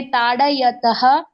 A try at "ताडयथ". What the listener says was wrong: त नहीं, थ थ। हाँ, थ का उच्चारण करना है। ताड़यथ।